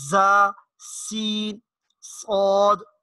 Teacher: تو یہ 3 حروف ہیں، ذرا سیٹی کی آواز ان میں آتی ہے ان کے ادا کرتے ہوئے